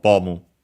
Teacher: accented just like in English, so on the first syllable, bomu, on the first mora, I should say, better.